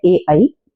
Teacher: कंठ तालव्य, जो कंठ से और तालव्य से इकट्ठे बोले जाते हैं,